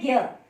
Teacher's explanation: इसमें ज और य को मिलाया गया है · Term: संयुक्त अक्षर